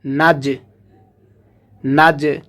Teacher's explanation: জিমটা কলকলার হরফ, এখান থেকে পাল্টা আওয়াজ হবে।